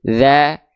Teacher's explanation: Biar fathahnya kadar tipisnya terjaga. Karena kan fathahnya ini vokal A, maka dia dilafalkan dengan kadar yang tipis.